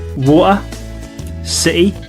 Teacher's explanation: in many cases the t sound is dropped